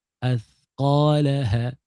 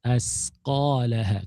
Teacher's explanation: Huruf tha, bila kita betul pada makhraj, kita tak salah dah huruf. Sebab huruf tha ni bila kita salah duduk dia, salah parking dia akan pergi kepada huruf sin.